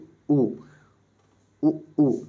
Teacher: हमारा ओष वर्ण होता है तो आप देखिए उ उ उ जब उ बोलते हैं तो ओठों का ही प्रयोग होता है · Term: ओष्ठ वर्ण